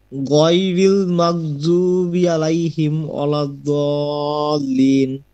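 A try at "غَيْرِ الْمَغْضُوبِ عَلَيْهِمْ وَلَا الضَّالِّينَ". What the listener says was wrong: ঠিক আছে, ওকে ঠিক আছে।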